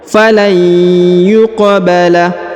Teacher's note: huruf qaf berharakat sukun maka dipantulkan dan dikolkolahkan, ya, dipantulkan atau dikolkolahkan. · Dina falai, huruf nun sukun bertemu dengan ya maka didengungkan dan dileburkan huruf nun menghilang masuk ke huruf ya